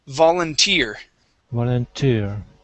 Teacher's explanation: stress at the end of the word